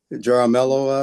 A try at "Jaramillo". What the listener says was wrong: the J in Spanish is always going to sound H. The J is H.